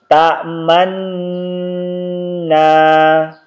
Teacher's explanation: hanya dibaca dengan isyarat bibir mencucu atau bibir di monyong kan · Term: isymam